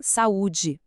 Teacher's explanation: no iato, eles são vizinhos, mas cada um tem seu próprio quarto, sua própria sílaba